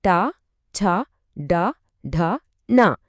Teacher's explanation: నాలుక వెనక్కి మడిచి అంగిలి పైభాగాన్ని తాకుతుంది